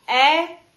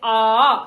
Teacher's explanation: आ की अपेक्षा ए में आधा मुंह खुल रहा है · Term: अर्धविवृत स्वर